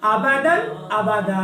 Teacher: पहले दन पे गुन्ना नहीं करना, दूसरे दन पे गुन्ना करेंगे, क्योंकि पहले दन के सामने हरूफ हल्की आ रही है।